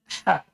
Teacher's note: Keluar dari tengah tenggorokan.